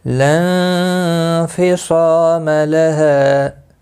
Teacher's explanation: ہا بھی الف مدہ ہے، ایک الف کی مقدار کے برابر کھینچ کر پڑھیں گے